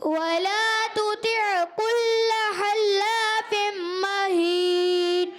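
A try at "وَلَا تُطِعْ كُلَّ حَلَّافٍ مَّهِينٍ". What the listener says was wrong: حلا، ہا کی ادائیگی کچھ کی کمزور رہی، ولا تطع كل حلاف مہین۔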